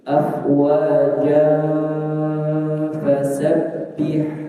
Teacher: Tetapi kalau disambung maka fathatain bertemu huruf fa hukumnya adalah ikh ikhfa. Nah, sehingga dibaca dengung ketika membacanya disambung tidak berhenti.